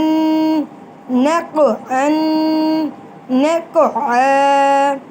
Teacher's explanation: پڑھتے وقت ان کی آواز گیند کی طرح واپس لوٹے گی، اور اس آواز کے واپس لوٹنے کو ہم قلقلہ کہتے ہیں۔